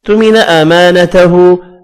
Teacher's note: الف مدہ الٹا پیش ایک ایک الف کی مقدار میں کھینچ کر پڑھے جائیں گے